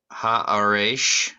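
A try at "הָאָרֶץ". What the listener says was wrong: It is Earth, but the last sound is a tsadi. It's a so it's haaretz. Haaretz.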